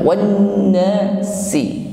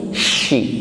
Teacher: tidak sekedar si sebagaimana kita mengucapkan huruf sin, bukan wanasi, tetapi shi ya, tekanan udaranya lebih tampak jelas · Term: tafasyi